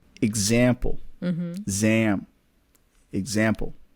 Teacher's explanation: the first syllable and the third syllable are very short